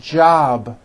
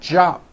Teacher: a voiced sound job it's not job with an unvoiced P keep the voicing going throughout the whole word jab with a voiced B ending